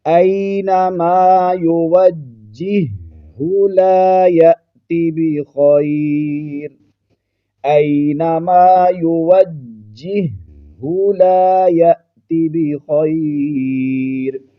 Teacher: پارہ نمبر 14 کے اس مشکل لفظ کو دیکھ لیجئے، یہاں پر جیم مشدد ہے اور پھر ہا مشدد ہے، تو بہت سارے احباب جو ہیں وہ اس کو یوجہو پڑھ رہے ہوتے ہیں، جبکہ یہاں پر یہ ہا ساکن جو ہے اس کو ہم نے نہیں پڑھنا، جیم مشدد پڑھا جائے گا اور ہا مشدد پڑھی جائے گی